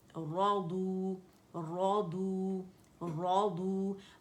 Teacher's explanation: ضاد بھی موٹا ہے، را بھی موٹا ہے